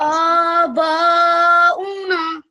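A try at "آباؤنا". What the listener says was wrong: Make this a little bit longer because it's alif madda.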